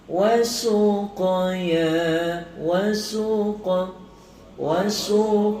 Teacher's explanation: qalqalah sughra untuk huruf qaf ni kita kena lantunkan qaf tu tebal